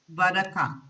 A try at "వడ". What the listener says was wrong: No, there is no word like vadaka. So it is only vada.